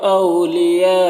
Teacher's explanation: میم میں اظہار شفوی ہو رہا ہے۔ او میں واولین ہے، اسے نرم آواز کے ساتھ جلد پڑھیں گے۔ اور لیا میں جو مد ہے مد متصل ہے، اسے 3 سے 4 الف برابر کھینچ کر پڑھیں گے۔